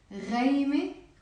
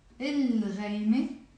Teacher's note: Then we have the gargling sound. Like the French sound